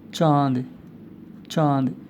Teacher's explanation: अनुनासिक उच्चारण मुख नासिका दोनों से युक्त होता है · और उच्चारण क्या होता है, जैसे अनुस्वार का उच्चारण नासिका से होता है, जबकि अनुनासिक का उच्चारण जो है, अनुनासिक का उच्चारण मुख और नासिका दोनों से होता है